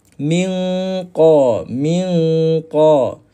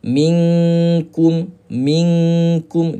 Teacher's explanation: Kalau kaf ni sifat dia dia nipis